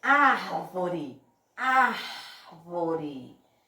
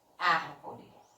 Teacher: Então, ó, árvore, a sílaba tônica aqui é o A.